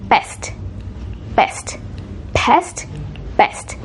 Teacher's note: in a lot of Indian English varieties or a lot of Indian English speakers, they don't make that puff of air